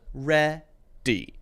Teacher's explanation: It goes a little bit up. We've always been ready. And then down. And then it stops.